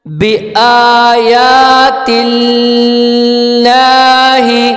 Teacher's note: اللہ سے پہلے جو ہے زیر ہے تو اس کو ہم ہلکا کر کے پڑھیں گے